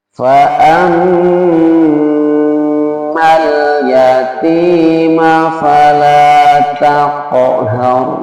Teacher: Kalau huruf ra sukun sebelumnya berharokat fathah dan dhamma, itu dibaca tafkhim.